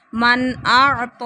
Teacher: نون ساکن کے بعد حمزہ آ گیا، اظہار ہو رہا ہے